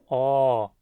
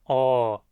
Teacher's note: Essa letra tem um som de O aberto, O, sempre longo, O, nunca curto como O e nunca fechado.